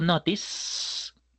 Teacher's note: el verbo notice no genera vibración, por eso el pasado se llamará noticed.